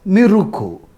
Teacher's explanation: is not possible according to the phonotactics of Japanese and therefore it is transformed into the CV CV pattern of syllables as miruku